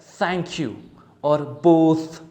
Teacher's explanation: you have to use the tip of the tongue that touch the front teeth of yours okay front upper teeth of yours so like the so the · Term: th sound